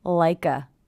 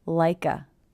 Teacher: Also, again here we have ending consonant sound, beginning vowel sound, like a. I hear the K linking to the schwa